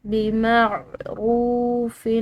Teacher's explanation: را کو لمبا پڑا کیونکہ اس کے بعد واو ساکن ہے